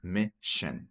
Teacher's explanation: Mission. Sim, esses dois S aqui tem um som de sh, tá? De sh.